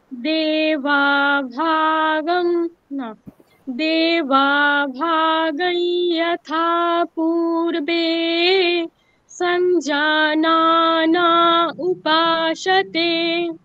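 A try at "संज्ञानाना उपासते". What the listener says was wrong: সাথে হয়ে গেল, সাথে দন্ত সকার। নাতে নিচে নামাতে হ্যাঁ, সঞ্জানা, ওই যে পূর্বে বে বলে আমরা যে উপরে স্বর দিলাম একটা, পূর্বে ওই উপরেই থাকছে। পূর্বে সঞ্জানা, নাতে আমি নামিয়ে দিলাম।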